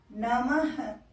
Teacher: विसर्ग को हम लोग ह की तरह उच्चारित करते हैं। इसलिए मैं ह बोल रही हूं।